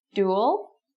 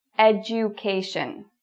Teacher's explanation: So it's a really strong du sound. Education is different. Education, the du sounds like a j.